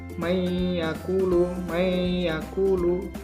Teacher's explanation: memasukkan atau meleburkan huruf disertai dengan dengung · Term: Bighunnah